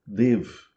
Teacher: Você engole o a final